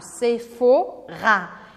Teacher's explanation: E como todas as palavras quase em francês, a sílaba forte é a última, a não ser que ela termine com um E.